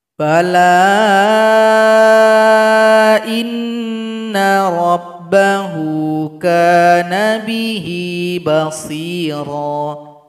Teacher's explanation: maka lam di sini dipanjangkan empat atau lima harakat bala Inna rabbahu kaana bihi bashiro karena telah menjadi Mad Jaiz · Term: Mad Jaiz munfasil